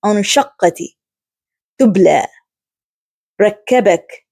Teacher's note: there is strong stoppage of the sound upon pronunciation of the letter when it carries a sukoon. This is achieved by relying strongly on the makhraj or by constricting it. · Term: shidda